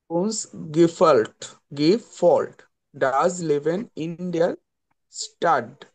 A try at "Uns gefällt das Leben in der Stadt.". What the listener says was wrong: এটা হবে গেফেল্ট, কারণ এর উপরে যদি উমলাউট থাকে ওটাকে, মানে এর উপরে উমলাউট থাকে ওটাকে এ বলা হয়, ওই জন্য গেফেল্ট বলেন।